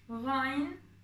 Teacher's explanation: Gayn harfi yine boğazdan çıkarılan bir harf. Gırtlaktan. Özellikle gırtlağı sıkarak söylüyorsunuz arkadaşlar. Ha harfinde olduğu gibi.